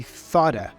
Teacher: Again, the final T in thought has a flap sound, ra, which then joins or connects with the vowel for of. And that vowel for of is a schwa sound, So we say thought'a.